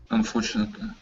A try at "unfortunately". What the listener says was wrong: give me a li at the end instead of unfortunately lee